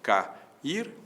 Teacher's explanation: duas vogais que vem sequência e ficam em sílabas distintas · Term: hiato